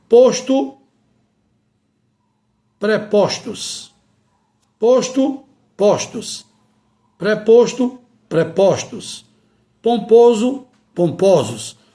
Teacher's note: no plural metafônico continua se mantendo o quê? A vogal aberta.